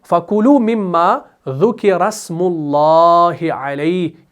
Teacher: اگر ہم اس کو ملائیں گے تو حمزۃ الوصل ڈراپ ہوگا